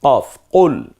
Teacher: কফটা জিহ্বার গোড়া থেকে একটু গম্ভীর আওয়াজ উচ্চারিত হয়